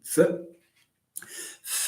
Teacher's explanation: the lower lip touches the upper teeth